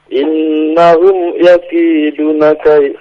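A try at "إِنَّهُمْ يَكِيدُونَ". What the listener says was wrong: yakiduna 2 harakat, Pak.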